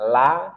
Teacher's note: makhraj huruf lam tepi lidah hingga ke ujungnya bertemu dengan gusi atas di hadapannya.